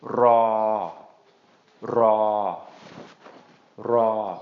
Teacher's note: just a long mid-tone, just draw that out